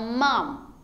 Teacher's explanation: Então, mom, teu M parou aqui, ó, no encontro dos dois lábios